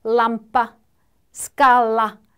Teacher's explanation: 우리말의 l와 유사하나 혀끝이 윗니 안쪽에 닿는다.